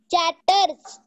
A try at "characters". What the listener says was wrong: This is a chat, but it is actually cat. It is not a chat. Generally we say the chair.